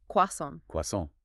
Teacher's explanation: The R sound is almost invisible, and the T at the end makes no sound at all.